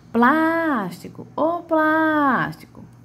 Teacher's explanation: plás é a minha antepenúltima sílaba, né? E é a que tem a maior tonicidade